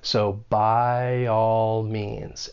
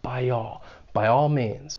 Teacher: When it comes to the pronunciation of this phrase and someone is speaking quickly, they may use intrusion to link the two vowel sounds in the words by and all, by all. And intrusion is when you're adding either a slight W sound or a slight Y sound, and that then allows us to link two vowels.